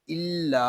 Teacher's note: لام پہ اپنی آواز کو کنٹینیو نہیں کریں گے، اس کو الا ایسے نہیں پڑھیں گے، اس کو پڑھیں گے الا۔ لام کو ایک الف تک کھینچ کر پڑھیں گے کیونکہ یہاں پہ الف مدہ ہو رہا ہے